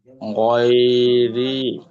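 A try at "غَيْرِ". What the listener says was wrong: কিন্তু রয়াজের রিতে একটু টান হবে, গয়রি। রয়াজের রি, ইয়া সেকেন্ডে ডান দিকে জেড থাকলে তাকে ইয়ামাদ বলা হয়, আর ইয়া সেকেন্ডে ডান দিকে জবর থাকলে ইয়ালিন বলা হয়।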